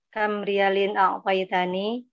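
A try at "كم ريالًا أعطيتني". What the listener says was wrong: Oke, pertanyaan lah intonasinya dirubah.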